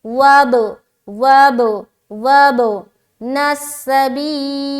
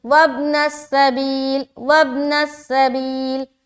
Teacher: तो बा में अपनी आवाज को टकराएंगे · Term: कलकला